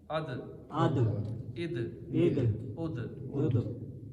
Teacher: اب دال حروف کلکلہ ہے، یہاں پہ آواز لوٹے گی، جنبش کرے گی، ٹکرا کے واپس آئے گی